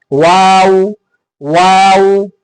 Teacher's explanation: होंठ जो है ना गोल होंगे। वाव, वाव, आखिर में होंठ गोल हो जाएंगे